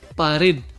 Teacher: La sílaba tónica también es la última, red.